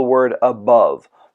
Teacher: includes two syllables the first one being unstressed while the second is stressed